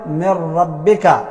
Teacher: صفت د غنې موجود دی نو من ربک موږ نه وایو دا نون چې دی مکمل ختمو او په دې را کې داخلوو نو دا اوس دې ته وایي تام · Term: ادغام تام